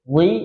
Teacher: Li, jangan ditarik ke dalam. Kalau ditarik ke dalam dia jadi ada bunyi zi, salah